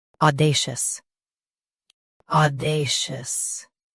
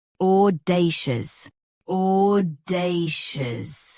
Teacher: US uses A. UK uses aw.